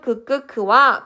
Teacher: 여린 입천장 소리에는 파열음 그끄 그와 비음 응이 있고요.